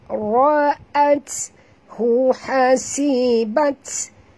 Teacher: bunyikan hamas pada ta dan ra tebal. Ra'at hu hasibat ya, bunyikan hamas pada ta yang mati.